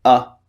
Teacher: your mouth is in a neutral position and it's very very short